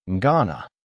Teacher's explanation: I am becomes I'm going to becomes gonna and then it gets even faster. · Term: connected speech